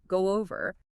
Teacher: But spoken naturally, that final O sound in go links to the O in over. And often there's like a subtle W sound that creeps in and almost sounds like go over.